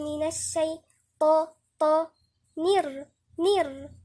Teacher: نيجي عند الطاء نفخم، لساننا هيكون كله لفوق، طرف اللسان ووسط اللسان واقصى اللسان يبقى كله لفوق. من الشيء، لحد هنا مرقق لعند الياء.